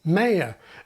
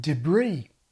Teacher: pronunciations that have shifted or are shifting to the American pattern, like two-syllable ‘mayor’ and final stress on ‘debris’